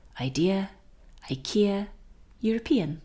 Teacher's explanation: The strong part of the word is on the e